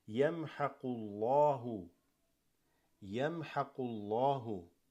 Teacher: This fatha dhamma, you read it full mouth.